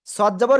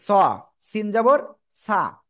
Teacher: মোটা আওয়াজ আর সিনে চিকুন আওয়াজ